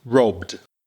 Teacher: So B is a voiced consonant. And then you've got the ED, which is a D after a voiced consonant.